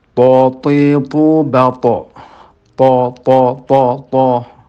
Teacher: perhatikan bahwa to itu tidak menggunakan bibir